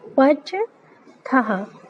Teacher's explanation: था बोलना है, उसके साथ हा उच्चारण करना है।